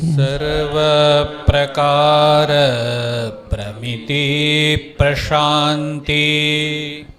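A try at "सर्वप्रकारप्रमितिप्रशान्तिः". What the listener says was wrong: प्रशांतिर एक रेफ है, हाँ। सर्व प्रकार प्रमिति प्रशांतिर,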